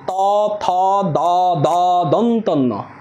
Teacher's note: এগুলো সবগুলো কিন্তু দাঁতের সাহায্য ছাড়া উচ্চারিত হচ্ছে না, এই জন্য এগুলোকে বলা দন্ত। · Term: দন্তধ্বনি